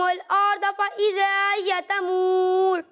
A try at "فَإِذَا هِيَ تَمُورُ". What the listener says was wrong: اچھی کوشش ہے لیکن آپ دونوں حمزہ کو مزید واضح کرنے کی کوشش کریں، ٹھیک ہے؟ اور دوسری بات یہ فَإِذَا هِيَ، فَإِذَا هِيَ تَمُورُ، اسے واضح کر کے پڑھنے کی کوشش کریں، ٹھیک ہے؟